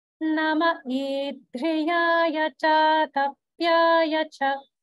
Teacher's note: And that's due to sandhi, because the following word is idhriyaya, which is starting with a vowel. So the visarga gets dropped and we have nama instead of namo.